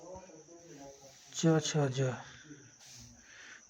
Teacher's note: तालव्य ध्वनियां है जो तालू से बोले जाते हैं